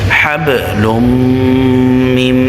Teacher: এখানে ইদগামে বা গুন্না, কারণ তানবিনের পরে মিম আসছে। মিম ইদগামে বা গুন্নার হরফ, ইয়া মিম ওয়াও নুন।